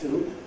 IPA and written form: tuː (to)